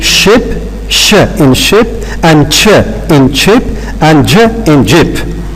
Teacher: Alveolo-palatal consonants, or in some books, they are called palato-alveolar consonants. These are formed by narrowing of the vocal tract between the alveolar ridge and the hard palate here. But we raise the blade and part of the front of the tongue there.